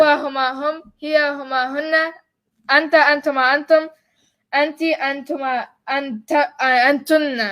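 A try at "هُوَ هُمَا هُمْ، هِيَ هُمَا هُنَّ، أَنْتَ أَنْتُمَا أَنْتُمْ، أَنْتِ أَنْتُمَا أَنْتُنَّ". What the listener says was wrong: Oh, you said antunna twice.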